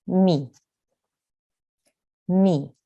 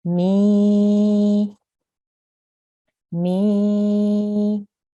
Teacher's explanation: Ya madiyya causes the sound to prolong to 2 counts